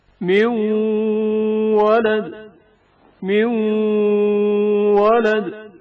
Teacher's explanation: واو میں نون ساکن کا ادغام جو غنہ کے ہمراہ ہے